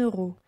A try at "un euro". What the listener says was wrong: This is a liaison with the letter N. N. Un euro.